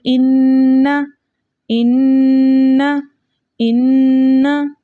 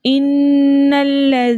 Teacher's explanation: अगर लेकिन यहाँ पर आगे लाम भी मुशद्दद है तो हम इस नून को लाम के साथ मिलाकर पढ़ेंगे